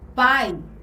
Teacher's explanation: Que é quando nós começamos com o fonema mais forte e em seguida temos aí o fonema mais fraco, que é o exemplo aí da palavra pai, né? Na palavra pai, a letra A, ela representa aí o fonema mais forte e a letra I é a semivogal porque ela tem o fonema mais fraco.